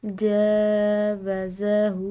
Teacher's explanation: ہاء پر الٹی پیش کی وجہ سے اس کو ہم نے ایک الف کے برابر لمبا ادا کیا، کیونکہ کھڑی زبر، کھڑی زیر اور الٹی پیش یہ عام زبر زیر پیش کے مقابلے میں کھنچاؤ کے ساتھ ادا کیے جاتے ہیں۔